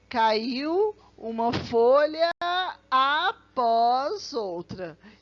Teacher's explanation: com som de vogal é permitido segundo as regras de metrificação você junta tá assim a última sílaba de uma palavra com a primeira sílaba da próxima